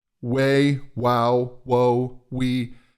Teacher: These are all diphthongs that you can use, and what happens is in the very beginning of that sound, you have an oo, you have narrow lips, which is going to instantly lower the first formant.